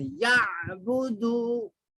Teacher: عین حلق میں سے نکلتا ہے، حروف حلقی میں سے ہے عین. تو عین حلق کے اندر سے یعبدو.